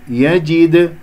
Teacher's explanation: دال مقلقلة وسط الكلام راح تكون فإذا صغرى